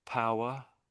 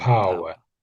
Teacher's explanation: And when you're saying power, I can really hear there's a W in it, but a lot of people in Britain sort of miss it.